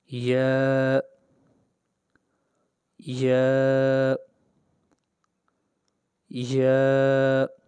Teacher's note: وسط زبان یعنی زبان کا درمیانی حصہ جب اوپر تالو کے برابر لگے گا تو یا ادا ہوگی۔ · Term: یا کا مخرج